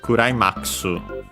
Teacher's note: in Japanese, it's accented on the ma, so as if it were climax.